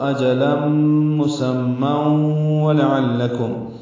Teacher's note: واو لام عین جلدی سے پڑھیں گے، لام سے ملائیں گے عین کو ، لام باریک ہے، کاف باریک ہے، میم ساکن پہ اظہار